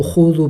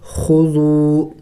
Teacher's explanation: کو خوضو پڑھ لیتے ہیں یہ خوضو نہیں ہے بلکہ خذو خا کے اوپر حرکت ہے یعنی پیش ہے اور حرکت والے حرف کو جلد پڑھنا ہوتا ہے ان کو لمبا نہیں کیا جاتا اور آگے ذال واو حروف مدہ میں سے ہے واو مدہ